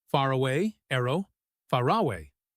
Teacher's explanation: The R at the end of far connects to away. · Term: linking R